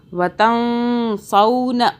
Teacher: وتنسون، یہاں نون ساکن کا قاعدہ ہے، یہاں پہ ہم نون کو چھپا کے پڑھیں گے، اخفا کریں گے. اخفا کا مطلب چھپانا، زبان تالو سے ٹچ نہ ہو. وتنسون، سون، سین واو زبر، سین واو زبر سو، یہ لین ہو رہا ہے، واو ساکن ہے.